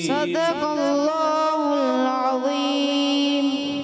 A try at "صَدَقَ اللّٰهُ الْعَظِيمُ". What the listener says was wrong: صاد موٹا کرنا ہے. صدق اللہ، قاف بھی موٹا، لغلام بھی، اور عظیم اللہ. صدق اللہ العظیم.